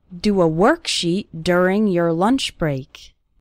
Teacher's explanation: the letter o in the word work and the letter u in the word during they both have this R sound